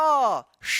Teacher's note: जीभ जो है ना तालू में सटेगा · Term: तालव्य श